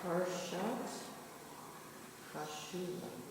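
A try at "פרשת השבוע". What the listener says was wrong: Ha-sha. Make the shin have its own vowel. You're blowing it. Ha-sha. They're missing a letter. They're missing a vowel here, so it should be hashavua.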